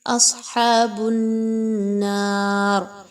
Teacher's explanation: اصحاب النار اس میں دیکھیے تو صاد کے مخرج کو اور ہا کے مخرج پر فوکس رکھیے. صاد کو خوب موٹا اور ہا کو باریکی سے نرمی کے ساتھ پڑھا جائے گا. نون پر نون مشدد کا غنہ کیجیے.